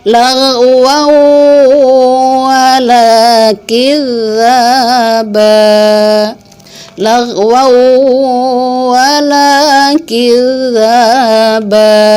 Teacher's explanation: tanwin fathatain di wa ketemu dengan wa, wawunya yang kedua seakan bertasydid